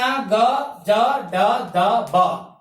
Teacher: तीसरे वर्ण ग, ज, ड, द, ब घोष हो रहा है, स्वर तंत्रियों में झंकार उत्पन्न होता है।